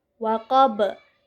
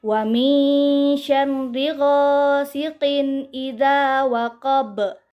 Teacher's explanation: cara membaca qalqalah kubra yaitu dipantulkan dengan pantulan yang kuat atau dengan pantulan yang besar